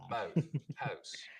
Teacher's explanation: So it's not smoothing out here, it's raising. The tongue starts a little higher up, instead of ah.